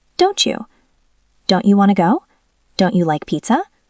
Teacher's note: You starts with Y. When T and Y touch, they turn into a ch sound, like cheese.